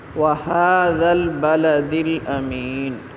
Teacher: ہا جو ہے حلق کے آخری حصے سے ادا کرتے ہیں